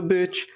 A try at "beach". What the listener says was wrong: Yeah, it sounds like we went to the bitch.